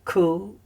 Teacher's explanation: Kubutz, so it's a slightly longer oo sound.